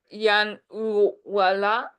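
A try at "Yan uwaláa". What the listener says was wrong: So the last sound in this phrase is a Tlingit L, and you don't voice it. You don't put your voice through. You just breathe out the sound.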